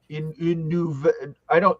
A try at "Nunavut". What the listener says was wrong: Nunavut. Not Inuvit. Nunavut. Begins with an N. Nunavut.